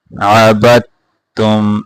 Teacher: یہاں عبد تم نہیں پڑھنا، دال کو نہیں پڑھیں گے، یہاں با کو تا کے ساتھ ملا کر پڑھیں گے